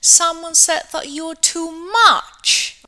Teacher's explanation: she produced the sentence with a falling tone, okay? Even if it's a high fall.